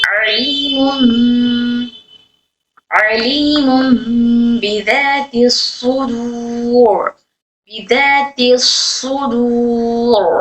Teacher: را کو موٹا پڑھیں گے کیونکہ را ساکن کر رہے ہیں یہاں پر، اس سے پہلے والا بھی ساکن، اس سے پہلے پیش، اس لیے موٹا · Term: را موٹا